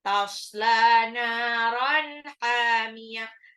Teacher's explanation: Tasla, lamnya 2 harokat. Mad tabi'i. Naron, nunnya juga 2 harokat.